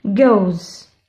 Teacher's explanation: Le S après une voyelle, il se prononce ZA. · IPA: /z/